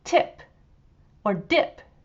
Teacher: And so when we say tip or dip, the T or the D sound is created because we push our tongue up to the top of our mouths, and that restricts the flow of air